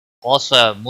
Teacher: قاف کو موٹا پڑھیں گے، حروف مستعلیہ میں سے